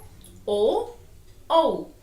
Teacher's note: छोटा ओ और बड़ा ओ। छोटा और बड़ा ओ कहां से हमारे साउंड निकलती है, ध्वनि निकलती है, कंठ और ओष्ठ से। कंठ बोल के देखो, ओ कहां से आवाज आई, कंठ और ओष्ठ से।